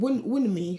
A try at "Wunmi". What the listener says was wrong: It's not. The end is silent.